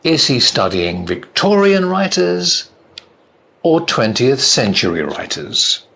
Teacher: again the voice goes up and then down